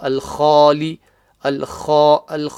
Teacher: The kha, the start, guttural sound, top of the throat.